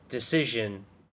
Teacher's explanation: decision already has an emphasis on the second syllable